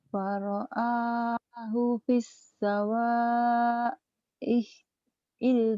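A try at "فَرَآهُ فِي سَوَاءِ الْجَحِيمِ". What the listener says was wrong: Jangan pis. Pi-nya ditahan. Faro'ahu fi sawail jahim. Punya pendek. Faro'ahu fi. Faro'ahu fi. Faro'ahu fi sawail jahim.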